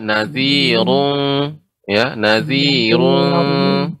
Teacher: ketika baca ru itu dibaca dengan tebal ro-nya